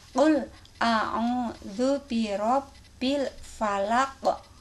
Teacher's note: huruf akhir itu ada huruf qalqalah, qaf, maka harus dipantulkan cara membacanya